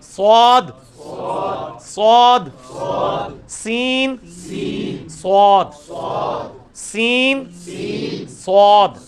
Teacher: سین کی آواز کو موٹا کیا، سواد بن گیا